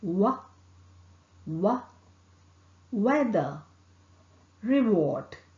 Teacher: W is articulated by raising the back of the tongue towards a soft palate. The lips are closely rounded. Here the vocal cord vibrates.